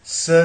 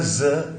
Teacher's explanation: स ज, ये भी वैसे ही है, स वॉइसलेस है, ज वॉइस है, अल्वियोलर है। अल्वियोलर है मतलब T3 से निकलती है।